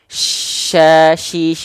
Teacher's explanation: syin itu di tengah lidah naik ke langit-langit